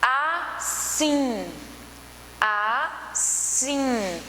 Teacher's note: O sim é a última sílaba e tem uma tonicidade maior. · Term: oxítona